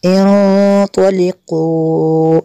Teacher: نون ساکن کے بعد تو حروف اخفاء میں سے یہاں پہ اخفاء ہوگا، اس لیے یہاں پہ غنہ کریں گے۔ انطلقوا اس کے اوپر جو مد منفصل ہے کیونکہ حمزہ دوسرے کلمے میں ہے۔